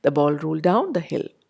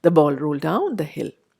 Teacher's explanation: So it is a deletion, as we would have, for example, in a sentence like, the ball rolled down the hill, would be in speech rendered as, the ball rolled down the hill. Rolled and down become combined, and we avoid the d of rolled and make it sound almost like a single word. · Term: elision